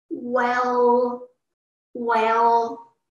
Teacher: from the top one quickly go to the bottom and from bottom go back to the high pitch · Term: the third one